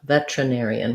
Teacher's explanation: But we tend to, again, reduce this word and say it more like veterinarian, which means we do the T sound. So it sounds like vetra, and then our stress is on the air syllable. So even though we have an ER here, it's just like the word where, we need that air diphthong.